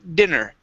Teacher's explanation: stress is at the beginning of the word